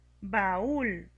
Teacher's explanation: Para poder pronunciar baúl tenemos que darle más fuerza a la vocal cerrada y esto lo hacemos poniéndole la tilde. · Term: hiato